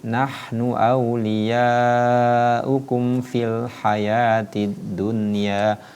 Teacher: Ini hurufnya hamas ya. Ketika penuturan huruf ha sukun, maka itu suara dialirkan, tidak boleh dibaca syiddah ya. Tapi nahnu awliyaukum fil hayatid dunya, tidak boleh nahnu awliya.